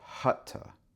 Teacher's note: when we say T, it touches the roof of our mouth and it cuts off the airflow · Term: a T sound